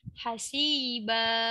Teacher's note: Tanwin jumpa ha kena bunyi jelas, jangan dengung.